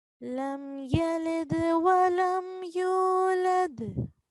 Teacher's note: we're going to prolong this yulad, you, for around 2 seconds.